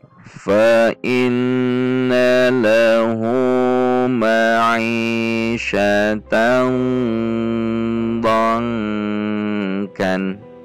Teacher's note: Ini dibaca dengung dan masuk kepada huruf kaf.